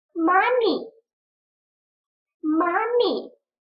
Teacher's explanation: Ударение падает вперед на первый слог